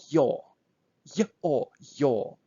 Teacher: So this is, we call them diphthongs. So this is a sound which consists on two sounds, short y and long o